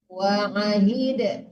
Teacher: Dipantulkan dalnya ya, Bu.